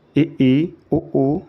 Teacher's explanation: ई ऊ बोलते समय दांत और होंठ लगभग बंद ही रहते हैं। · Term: संवृत